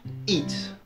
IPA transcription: ɪd